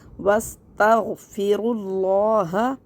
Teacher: غین کو حلق سے نکال کے پڑھنا ہے ، اور تا کو بہت سے لوگ موٹا کر دیتے ہیں، · تا کو باریک اور غین کو موٹا کرنا ہے